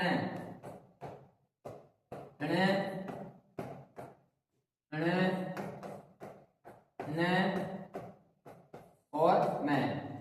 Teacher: ण ण ण और मैं ये पंचम नासिक वर्ण होते हैं जिनका उच्चारण नासिका से होता है और नासिका से होने के कारण इनकी जो वायु निकलती है वो नासिका से निकलती है। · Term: नासिक व्यंजन